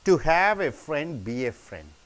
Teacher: a good reason for intonation would be to the contrast that lies in the verbs have and be